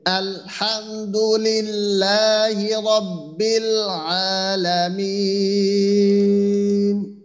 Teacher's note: এই লামের ক্ষেত্রে লামটা যেন লামের মতো হয়, নাকে না ওঠে